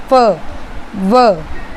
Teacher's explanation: जब हम फ बोल रहे हैं तो उसमें क्या हो रहा है, हमारा जो लोअर लिप है वो अपर टीथ को टच कर रहा है। फ, व, ठीक है, आप साथ साथ बोलोगे तो आपको समझ में आ जाएगा। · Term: लेबियोडेंटल